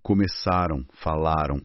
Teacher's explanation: Principalmente no final dos verbos da terceira pessoa do plural do pretérito perfeito, o an, que a gente fala como ditongo nasal na maior parte do Brasil